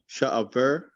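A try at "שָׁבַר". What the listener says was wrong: not sha'ah, just sha var.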